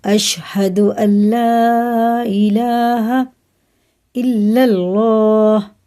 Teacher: اس کو نون کو رما میں نہیں لگائیں گے، لام کو اس کی جگہ لگا کے پڑھیں گے نون کی